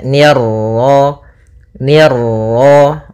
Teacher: ni tipis ketemu ro yang ro tafkhim ro tebal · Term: ra tafkhim